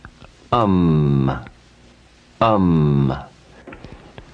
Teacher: it represents the closing of the lips and the creation of a nasal sound because the vibration is now directed up through the nasal passage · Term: anusvata